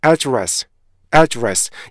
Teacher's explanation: 에 발음하시고요. 그 상태에서 앞에 있는 에 발음은 정확하게 발음해주고 뒤에 있는 에 발음을 약간 약화를 시켜서요. address, address 약간 에 느낌이 들리죠. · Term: 슈아 발음